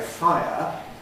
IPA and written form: ˈfaɪə (fire)